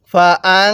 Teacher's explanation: নুনের মধ্যে এক আলিফ টান দিব খারা জবরের কারণে